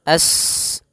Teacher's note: sifat mengalirkan nafas atau berdesis seperti suara burung